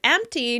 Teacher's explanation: the word empty now includes the p sound in the middle of the word